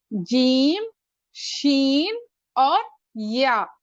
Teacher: اور حروف شجریہ کو ہم لوگ درمیانی حصے سے، زبان کے درمیانی حصے سے، اور اوپر کیا ہے، تالو کے طرف ہماری زبان کا درمیانی حصہ اوپر اٹھے گا